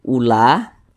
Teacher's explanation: la ini dibaca panjang. Ini namanya adalah mad wajib muttasil.